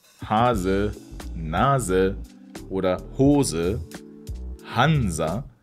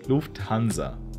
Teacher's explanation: when the letter S is at the beginning of a syllable, like in the words Hase, Nase, or Hose, Hansa, then we pronounce it Z, not S.